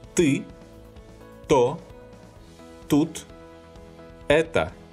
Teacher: Note, please, that in Russian this sound is pronounced without aspiration.